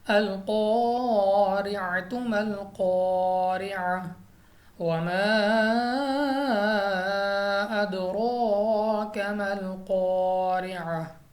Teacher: قاف ایک تو مستعلیہ میں سے ہم نے پر پڑھنا ہے منہ اور آواز کو کھول کر یعنی موٹا کر کے۔ اس کے بعد ہمارے پاس الف اس پر زبر آ گیا تو الف مدہ یعنی دو الف دو حرکات کے برابر کھینچ کر پڑھیں گے۔